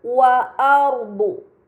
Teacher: terdapat ro sukun sebelumnya harakat fathah yang berada di huruf hamzah maka ro sukun tersebut harus dibaca secara tebal